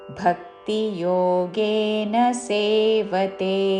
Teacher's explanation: మహాప్రాణాక్షరము భ దాని మీద ఆఘాత